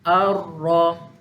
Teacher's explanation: So, contoh yang kita bagikan, ra yang ada tanda sabdu, keluarkan ra jadi dua. Ra yang pertama sukunkan dia. Kemudian ra yang kedua ikut baris asal. Ar-ra. Jangan getaran terlalu lama.